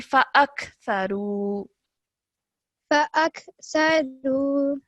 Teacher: when you're joining the alif to the kaf, don't produce a jerk sound because this kaf is not part of the qalqala letters.